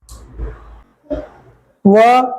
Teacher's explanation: और 'वा' के उच्चारण का स्थान दांत और होंठ हैं। डांटोस्थ. 'वा' बोलकर देखें; आपको अपने दांतों और होंठों दोनों की मदद लेनी होगी।